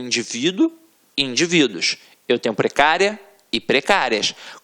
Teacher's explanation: a sílaba tônica está na penúltima sílaba, portanto é uma paroxítona, e é uma paroxítona terminada em ditongo.